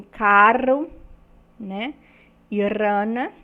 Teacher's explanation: quando a ponta da língua bate várias vezes nos alvéolos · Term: sons vibrantes